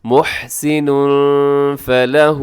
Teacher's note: ہے، اور تنوین کے بعد فلہ کے شروع میں فا ہے، تو یہاں آپ نے اخفا کرنا ہے، آواز کو ناک میں چھپانا ہے ۔ محسن فلہ، فلہ کے اوپر جو مد ہے وہ چھوٹی